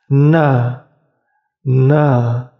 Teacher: Ujung lidah kalian berada di langit-langit depan, dekat gigi seri atas. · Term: huruf nun